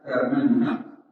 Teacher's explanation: فورش يبدل الهمزة ألفا تامننا